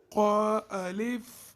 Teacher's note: حرف قا جو ہے یہ حروف مستعلیہ میں سے ہے، اس کو موٹا پڑھتے ہیں